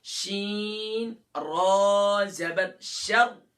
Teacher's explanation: را سے پہلے زبر ہے تو را کو فل ماؤتھ کریں گے، را کے نیچے زیر ہے تو اسے لائٹ کریں گے.